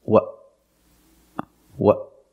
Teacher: your throat like this what what the tongue stays down because I stop the air in my throat I tighten my throat to stop the air · also stop the air in your throat like this what what the tongue stays down because I stop the air in my throat